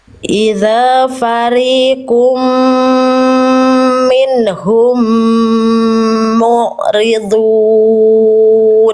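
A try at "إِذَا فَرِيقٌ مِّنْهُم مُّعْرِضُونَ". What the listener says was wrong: Oke, sekali lagi di ainnya lebih tegas lagi sedikit, mu'ridun. Idza fariqum minhum mu'ridun.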